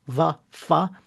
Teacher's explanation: the labiodentals, right? So that means teeth and lips, right? So va, fa, where you bring the teeth over your lip.